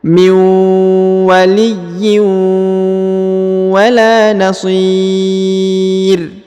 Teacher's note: huruf ro yang di ujung disukunkan atau dimatikan ya menghilang rinnya